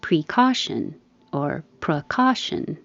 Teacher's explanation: You can say pre or pra because the pre is not stressed. The E can change to a.